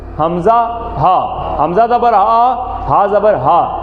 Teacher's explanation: گلے کا وہ حصہ جو سینے کی طرف ہے، یہاں سے ادا ہوتا ہے